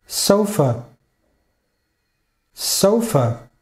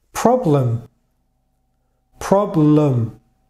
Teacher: O vogal átona na palavra torna-se um schwa.